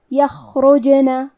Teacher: جیم بھی حروف القلقلہ میں سے ہے تو ہم یہ حرف کو ہلاتے ہوئے یہ کلمہ کو پڑھیں گے